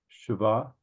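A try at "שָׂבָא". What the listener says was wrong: Sova, That dot that makes it a sin doubles as an O. And again, in some books, they will put 2 dots there for you. Sova.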